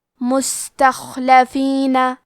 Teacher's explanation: حرف الخاء کی ادائیگی حلق کے اوپر والی حصے سے ہے، کیونکہ خاء حروف التفخیم میں سے ہے، تو ہم یہ حرف کو موٹی آواز میں پڑھیں گے۔